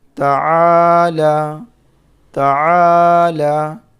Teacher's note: یہاں پر الف مدہ ہے، الف سے پہلے زبر ہے عین کے اوپر، عین کو تھوڑا کھینچ کر کے پڑھیں گے کیونکہ یہاں پر الف مدہ ہے